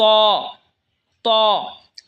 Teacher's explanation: ত জিহ্বার আগা সামনের ওপরের দুই দাঁতের আগার সঙ্গে লাগায় উচ্চারণ হবে ত।